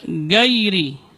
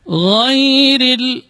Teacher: huruf gha juga sering di sini tidak boleh ada getaran karena gha keluarnya dari ujung tenggorokan. Adnal halq, dari ujung tenggorokan, dan dia bukan huruf tikrar. · dia termasuk rakhawah, huruf yang mengalir ketika pengucapannya